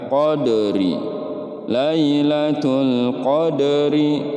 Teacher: Nah, ini qalqalah sugro. Karena berada di tengah-tengah kata, maka dibacanya dia memantul dan ini adalah qalqalah sugro, ya.